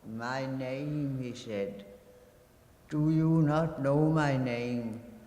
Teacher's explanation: As you listen, focus your attention on the grain of her voice, on the cadence of her sentences, on the breath and pause she makes between those sentences, on the crescendo and emphasis she places on the obvious repetitions of the monosyllable name